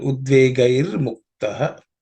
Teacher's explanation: Udvegaihi, the visarga becomes ir when it joins mukta. So it becomes udvegair muktaha.